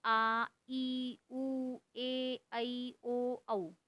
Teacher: जिन स्वरों के उच्चारण में 2 मात्राओं का समय लगता है उन्हें दीर्घ स्वर कहते हैं।